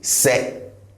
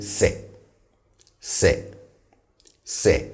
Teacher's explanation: First, the se is on the lower side in terms of tone.